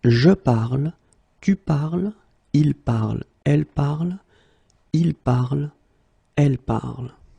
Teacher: even if you write them differently, es, and then ent, you will pronounce them the same way